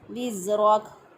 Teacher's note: ज़ा की अदायगी में सीढ़ी जैसी आवाज़ आनी चाहिए, क्योंकि ज़ा जो है सीन, सौद और ज़ा इन तीनों का मखरज एक जैसा है।